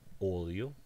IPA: oðio